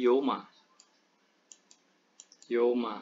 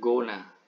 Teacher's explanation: jadi nggak ada diftong dalam dialek Madanahaya